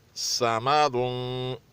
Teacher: स्वाद मोटा, मीम पतला और दाल भी पतला